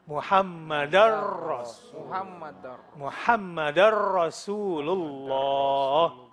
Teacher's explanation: Ada tanwin, ketemu ro, jadi masuk.